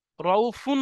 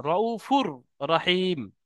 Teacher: তানমিনের পরে ঈদগামে ইয়ার মানের মধ্যে রয়েস, তাই এই তানবিনকে রয়ের সাথে মিলিয়ে বিনা গুণনায় তাড়াতাড়ি পড়তে হবে, একে ঈদগামে তাম বলা হয়।